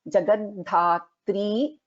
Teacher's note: In Jagadhatri we have Alpa Prana Da as well as Mahaprana Dha